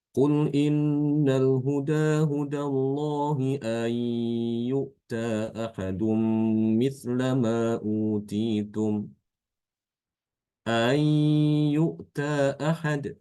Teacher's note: karena ini ada dua Hamzah otomatis kaidahnya Hamzah yang kedua itu harus ditasilkan